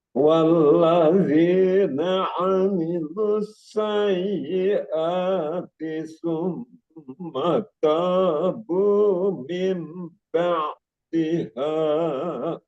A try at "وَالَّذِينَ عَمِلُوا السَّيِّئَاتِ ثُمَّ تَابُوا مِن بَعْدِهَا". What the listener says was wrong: Mimnya tadi itu sudah dapat juga iklabnya, namun terlalu sedikit. iklabnya Kurang ditahan.